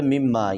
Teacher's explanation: یہاں پر غنہ بھی کریں گے اور الف کو لمبا بھی کریں گے